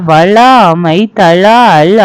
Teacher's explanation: லா என்னும் எழுத்தை 3 மாத்திரை அளவு நீட்டித்து ஒலிக்க வேண்டும். அதற்கு அடையாளமாகவே லாவை அடுத்து அ இடம்பெற்றுள்ளது. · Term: அளபெடை